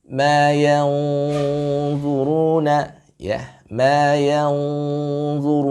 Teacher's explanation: ini diberikan tafkhim guna ketika dia berhukum dengan hukum ikhfa hakiki